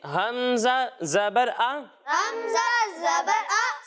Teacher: जब हम हमजा की अदायगी करेंगे तो इसे हम हलक के निचले हिस्से से पढ़ेंगे